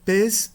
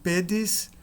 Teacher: O E é longo no nominativo singular, mas breve no genitivo singular.